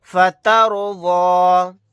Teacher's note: یہاں پر رائے ساکنہ کو بھی موٹا پڑھیں گے کیونکہ اس سے پہلے زبر ہے۔